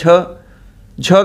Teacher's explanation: झ का उच्चारण स्थान तालव्य है